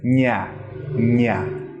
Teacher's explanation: And we're going to stick that on our hard palate. So instead of sticking the very tip of our tongue, we're using the flat bit right at the front. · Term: palatalized nasal